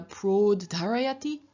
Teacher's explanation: And so, for example, of pra, ud, dr, meaning to raise, we have a third singular prod dharayati, where pra and ud have merged, but not into proud, or rather, originally it was an au, but this au has changed into an o, and so praud then becomes prod